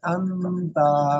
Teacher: নুন সাকিনের পরে হুরুফে ইকফা 15টি অক্ষরের মধ্যে তা এসছে, তাই নুন সাকিনের আওয়াজকে নাকে তুলে এক আলিফ গুণনা করে পড়তে হবে